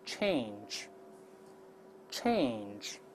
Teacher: 先发▁a▁再加鼻音▁an